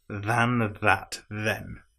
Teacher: all three of the th's are voiced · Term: th sound